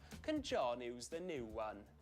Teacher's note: a lot of Welsh speakers, or people who speak with a Welsh accent, will tend to drop the y sound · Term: yod